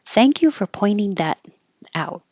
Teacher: the t will change to a d